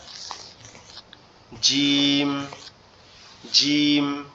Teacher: জিম হচ্ছে আমাদের জিহ্বার মধ্যখান, উপরের তালুর সঙ্গে লেগে শক্ত আওয়াজে উচ্চারণ হবে জিম